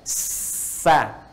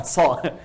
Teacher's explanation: Jadi ketika dia bunyinya ke bawah tidak muncul seperti o lagi, tapi netral jadi a, ya. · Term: istifal